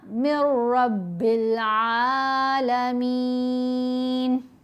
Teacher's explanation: پھر را اور لام کے اوپر جب ادغام ہوگا پھر غنہ نہیں کرنا